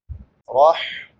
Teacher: رح چھوٹی حا ہے، حلق کے درمیان سے ادا ہوتی ہے